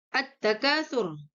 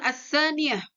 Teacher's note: Jadi alif lam samsiah ini ketika bertemu dengan huruf yang 14 ini, yaitu ta, tha, dal, zal, ro, zai, sin, shim, dan seterusnya, akan menjadi yang namanya alif lam itu ketika dibaca hilang atau tersembunyi atau yang namanya idgham. Jadi ketika dibaca alif lamnya ini seolah-olah tidak ada.